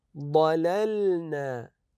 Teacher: نبين اللام الاولى واللام الثانيه